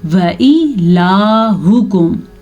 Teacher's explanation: واو کی زبر لمبی نہ ہونا پائے، یعنی کہ بعض لوگ پڑھتے ہیں وا یا وا الہکم، یہ بہت غلط بات ہے۔